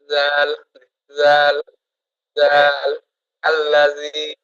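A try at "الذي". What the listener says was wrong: আল্লাযী, এই তো সুন্দর হয়েছে মাশাআল্লাহ।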